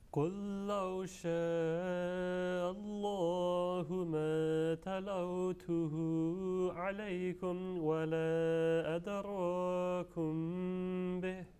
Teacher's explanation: assimilation of lam sakin with the vowel lam